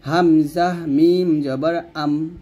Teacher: তাহলে হামজাকে মিমকে ধরলে দুই ঠোঁট বন্ধ হয়ে যাবে বা দুই ঠোঁট মিল হবে এবং দুই ঠোঁটের শুকনো অংশে মিল করবেন হামজাহ মিম জবর আম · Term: ঠোঁটের অক্ষরে